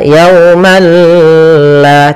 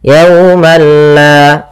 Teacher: tidak disertai dengan gunah sehingga langsung saja tidak boleh ditahan, tidak dibaca yaumal la tidak. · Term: idgam